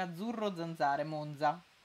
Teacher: io monza pronuncio con la z sonora